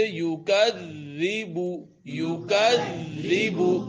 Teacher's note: ذال کے اوپر شد کی وجہ سے زور لگے گا، لیکن ذال کو اپنی جگہ سے پڑھیں گے تو زا کی آواز پیدا نہیں ہوگی · تو زا کی آواز پیدا نہیں ہوگی۔ جیسے یکذب، یکذب، اب زبان دانتوں کے کناروں سے زبان کی نوک لگتی ہے، زور بھی لگے گا شد کی وجہ سے ، تو وہ اپنی جگہ سے ہی پڑھا جائے گا، یکذب،